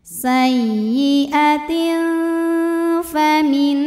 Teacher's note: Karena tanwin kasrah menghadapi huruf fa, maka tanwinnya dibunyikan samar-samar, siap-siap menuju huruf fa disertai bunyi dengung. Dengung dan samarnya sama karena makhraj huruf fa tidak terlalu dekat, tidak terlalu jauh dari nun. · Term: ikhfa awsat